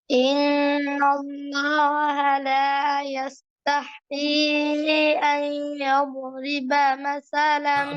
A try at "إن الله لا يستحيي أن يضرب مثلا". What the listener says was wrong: ধরা হচ্ছে না, দদ ধরা হচ্ছে না তো। ওয়াদ্দাদু মিন হানাফাতিহি ইবওয়ালিয়া, জিহ্বার সাইড থেকে। আইয়াদ ইয়াদরিবা, ইয়াদরিবা, ইয়াদরি।